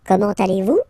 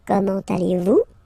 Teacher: it's a question, so raise a little bit your voice at the end, like, comment allez-vous?